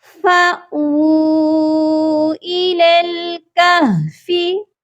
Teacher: فا کے ساتھ ہم نے حمزہ کو ملانا ہے، الف کے ساتھ نہیں فا کو ملایا جائے گا۔ اور جب بھی حمزہ ساکن ہوتا ہے تو حمزہ کو جھٹکا دے کر پڑھا جاتا ہے۔